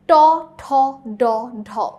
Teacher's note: উচ্চারণ করার সময় জিভ টাচ করছে মূর্ধাতে। মূর্ধাটা আসলে কি আমাদের দাঁতের পিছে যে একটু শক্ত উঁচু অংশটা আছে না, শক্ত অংশটা দাঁতের পিছে, ঠিক দাঁতের পিছে, উপরে পাটির দাঁতের পিছে, সেটাকে বলে মূর্ধা।